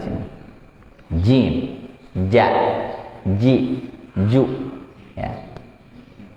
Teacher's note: Jim, jadi dia kena tengah lidah dengan langit-langit.